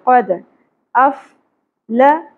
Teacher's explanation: قاف کو پر پڑھیں گے، دال ساکن پہ قلقلہ ہوگا